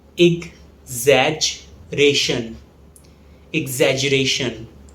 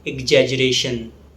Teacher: The stress falls on ration.